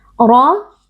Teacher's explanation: Ra huruf tafkhim atau huruf tebal karena ra berharakat fathah dibaca dengan mengangkat pangkal lidah